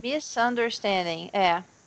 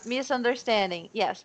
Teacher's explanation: eu tô falando isso em voz alta para eu lembrar de falar com som de S, não de Z.